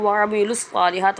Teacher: عین کو حلق سے ادا کریں گے۔